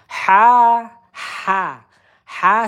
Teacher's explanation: Ha ini tengah tenggorokan udara keluar.